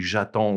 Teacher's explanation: we would run those together because that je ends with E, a vowel, and the next word starts with a vowel